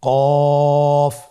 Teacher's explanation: আবার বলুন কফ কফের মাখরাজ স্ক্রিনে লক্ষ্য করুন এখানে আমরা মাখরাজের বা উচ্চারণের স্থান দেখতে পাচ্ছি কফের মাখরাজ হলো জিহ্বার গোড়া তার বরাবর উপরে তালুর সঙ্গে লাগিয়ে উচ্চারিত হয়